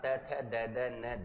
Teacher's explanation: ट वर्ग का उच्चारण स्थान मुर्दा हो जाएगा। और त वर्ग का उच्चारण स्थान त थ द न दंत हो जाएगा